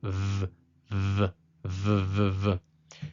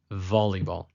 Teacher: it is called vet, making a dental labial sound